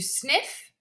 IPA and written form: snɪf (sniff)